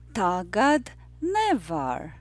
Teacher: The rhythm of the phrase is yes, no, yes, no.